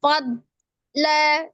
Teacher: Innal fad ada huruf dhad ya. Huruf dhad ini huruf tebal tidak dipantulkan, dia memiliki sifat istitolah, dipanjangkan. Jadi kalau baca huruf dhad yang disukunkan jangan dipantulkan tapi seperti seolah-olah terjeda, tapi sebenarnya dipanjangkan ya sukunnya.